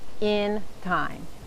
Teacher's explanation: la I en la palabra in se pronuncia como la I corta del inglés, que es parecida a la I del español, pero no ensanchamos los labios tanto horizontalmente